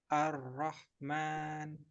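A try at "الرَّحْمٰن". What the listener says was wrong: Kurang tebal. Ar-Rahman. Takrirnya dikurangi lagi. Ar-Rahman, disamarkan.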